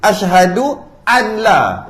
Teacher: Idgham bila gunnah. Idgham bila gunnah, hilang nun kan? Hilang terus nun.